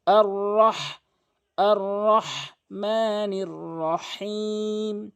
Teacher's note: এখানে হা রয়েছে হলকের মাঝখান থেকে উচ্চারণ করতে হবে